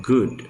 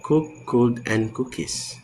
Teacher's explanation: G is a voice velar plosive, as in good. Both sounds produced at the back of the mouth using soft palate or velum, but G requires the vocal cord to vibrate while K does not.